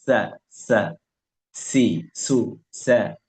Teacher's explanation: സീനിന്റെ മഖ്റജ് രണ്ട് പല്ലുകളുടെ മേലെയും താഴെയുള്ള മുൻപല്ലുകളുടെ ഇട, അതിന്റെയും നാവിന്റെ തലയുടെയും ഇടയിൽ നിന്നാണ്. ഇപ്പൊ നാവിന്റെ തല ഈ രണ്ട് മുൻപല്ലിന്റെ ഇടയിൽ കൊണ്ടുപോയി വെക്കുക. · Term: സീൻ